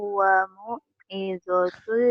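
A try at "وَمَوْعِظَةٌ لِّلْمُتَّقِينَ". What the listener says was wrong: Wa mau, bukan wamu situ, wa mau. Wa mau'izatul lil muttaqin.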